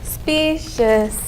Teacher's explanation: There are 2 syllables and the first syllable gets the accent.